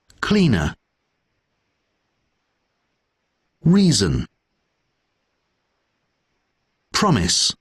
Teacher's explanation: all of these have the stress syllable in the beginning